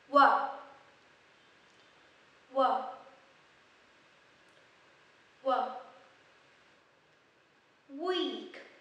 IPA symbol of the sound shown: w